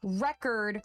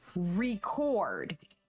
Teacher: In record, the stress is on that re. That's what you're putting emphasis on, so you get the word record. But when you have record, that second syllable takes the emphasis, and it's what we call stressed.